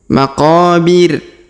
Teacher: huruf qo kita panjangkan dua harakat karena terdapat Alif